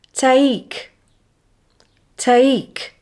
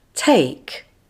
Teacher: the first sound is longer and stronger than the second the second sound is unstressed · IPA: /eɪ/